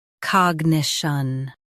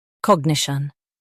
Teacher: U.S. stresses niche, UK stresses cog